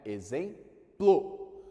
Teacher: Sai um P e sai um L no mesmo impulso de som. Isso aqui é o que a gente vai chamar de encontro consonantal.